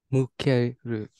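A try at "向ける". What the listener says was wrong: Hai, mukeru.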